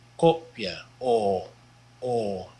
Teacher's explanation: Notice there's two consonants before the next vowel. A short O in Dutch, though, is not an O sound and not an A sound either, but kind of in between.